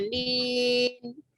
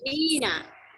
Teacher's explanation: Kalau dibacanya nin berarti mat tarid li sukun. Tapi kalau nina, nah berarti mat tabi'i.